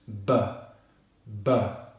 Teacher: Finishing on the voiced /b/ consonant